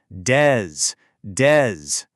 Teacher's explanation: Flip the switch. Start with a duh sound and release it right into a buzzing zz sound. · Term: voiced sound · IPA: /dz/